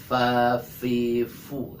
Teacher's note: huruf fa ini disebutkan atau dibacanya secara mahmus dia. Fa fi fu. Nah, ada desis melalui bibir ya, tipis dia.